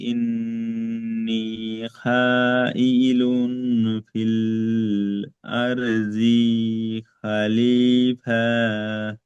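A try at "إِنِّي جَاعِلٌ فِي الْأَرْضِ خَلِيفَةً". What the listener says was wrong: আপনার কপ কলা এখানে টান হয়েছে, রব্বুকা কাপটা টান হয়েছে, লিল মাটা টান হয়েছে, ইন্নি টান হয়নি, জিমটা আপনি খ পড়েছেন, এটা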